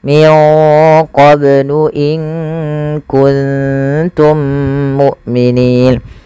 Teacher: Kemudian pada lafal mim mati bertemu mim, adanya 2 mim yang saling berdekatan, maka cara membacanya mim yang satunya dimasukkan kepada mim yang kedua dan ditahan suara mimnya. Dan inilah yang kita namakan dengan idgham mim apabila ada huruf mim bertemu dengan mim yang serupa.